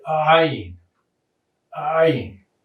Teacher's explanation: Historically, it had a sound that was a guttural sound, and it's a little bit like the glottal stop that we talked about with the aleph, but the difference is that it's vocalized, so you're trying to stop yourself from saying it, and then you force the air through anyway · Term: guttural ayin